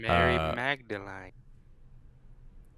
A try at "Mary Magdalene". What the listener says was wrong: I think it's Mary Magdalene. Magdalene. There's no I in there. It's Mary Magdalene.